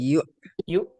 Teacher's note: হামজা পেশ ইউ হঠাৎ করে আটকে যাবে একদম থেমে আটকে যাবে